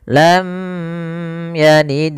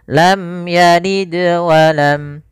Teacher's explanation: Izhar artinya jelas, syafawi kanan mulut, bibir kita. Maka mim itu makhrajnya, tempat keluarnya adalah di bibir kita. Sehingga ketika melafalkan mim itu harus jelas izhar, tak boleh ditahan gunnah. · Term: izhar syafawi